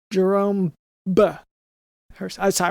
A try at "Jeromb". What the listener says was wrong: the B's not silent. Jeromb. You want to hit I hit the B at the end.